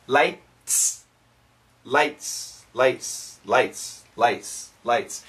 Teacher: Gotta have this S, floodlights. The faster we say this word, the less T sound. The T is very weak, very small.